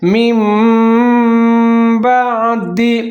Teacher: نون حذف ہو رہا ہے اور میم کی آواز کو ہم ظاہر کر رہے ہیں ، میم بعد ذالک، لکھا ہوا ہے ذالکا، لیکن جہاں پر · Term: اقلاب